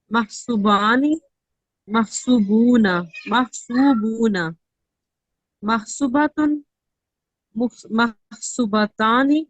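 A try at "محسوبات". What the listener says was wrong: अब आप ये वाव ये मिस कर रही हैं, मुअन्नस में आप ये वाला वाव मिस कर रही हैं, तो फिर से करें।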